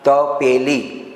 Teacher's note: તપેલી બોલવું છે તો જીભનું ટેરવું જે છે તાળવે નથી અડતું